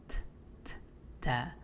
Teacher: make sure that there's a little bit of air being expelled from your mouth as well